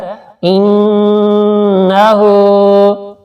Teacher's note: الٹا پیش کو تھوڑا سا کھینچ کے پڑھا جاتا ہے